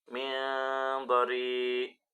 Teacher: nun mati bertemu dengan huruf dod. itu adalah bacaan ikhfa dibaca samar